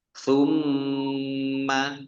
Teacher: mim tasdid dibaca gunah atau mendengung, ditahan 2 harokat. Kalau tidak ditahan berarti tidak mendengung.